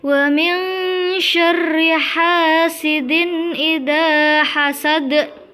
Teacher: Sedangkan untuk lafadz hasad juga harus dipantulkan sama seperti yang sebelumnya tadi, karena di situ juga termasuk bacaan qalqalah kubroh di mana ada huruf dal di akhir kalimat · Di situ juga ada bacaan idhar halqi di mana ada tanwin bertemu dengan alif, maka harus dibaca terang dan jelas